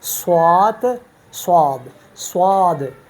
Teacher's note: تو یہ صاد جو ہے اس میں استعلاء اور اطباق ہے، صاد ضاد، صاد ضاد، طا وا، تو یہ صاد अब देखिए ना, स्वाद, इसको हम पुर पढ़ते हैं तो इसको इस्तिआला कहा जाता है।